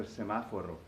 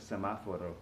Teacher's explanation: it's got that accent on the second syllable of semaforo